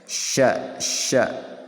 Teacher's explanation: di tengah-tengah lisan dan tengah-tengah langit-langit bagian atas